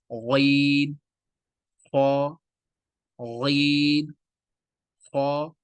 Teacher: غین اور خا، یہ دونوں موٹے پڑے جائیں گے، فل ماؤتھ کے ساتھ پڑے جائیں گے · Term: موٹی آواز